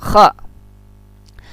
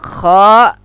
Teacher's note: Kha ini adalah makhrajul hurufnya adalah huruf khalqi bagian atas, sama gha juga.